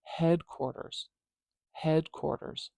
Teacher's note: I hear the head part way louder than the quarters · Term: primary stress